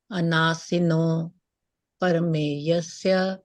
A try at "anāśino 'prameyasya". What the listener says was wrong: So anashi, nash. Remember for nash, anashi, no. Not para. Yeah, not para. Yeah, prameyasya, right? Anāśino prameyasya. Yeah, to get the flow, you can even say it like that. Anāśino prameyasya, right? I think I'm finding it better to pronounce it that way. Okay, although it is yasya.